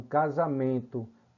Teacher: Observe que você não escuta o som de n você vê a letra n a grafia n mas não escuta